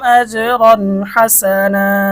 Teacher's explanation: এখানে তানবিনের পরে হা এসেছে, আর আমরা ইতিমধ্যে দেখেছি 9 নং সূত্রে আমরা দেখেছি হা হচ্ছে ইজহারের হরফ, এজন্য গুণনা ছাড়া স্পষ্ট পড়তে হবে।